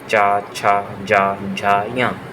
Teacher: च वर्ग च छ ज झ ञ ये तालु का स्पर्श करते हैं बोलते समय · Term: स्पर्श व्यंजन